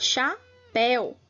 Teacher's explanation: o agudo está na vogal e o som é aberto